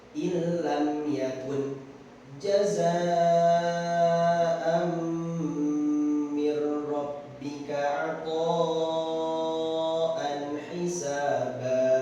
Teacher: dimasukkan dengan tanpa gunnah, jadi hanya ditempelkan saja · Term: idgham bila gunnah